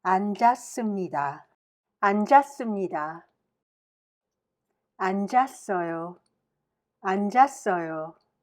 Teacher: 앉다 has two lower consonants, and the second consonant, 지읒, is pronounced with the second syllable